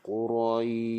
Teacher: Quraish tu panjang dia 6 dan juga shin tu bagi berhamburan udara. Sebab shin tu sifat dia tafashi. Huruf shin ini dia makhrajnya di tengah lidah.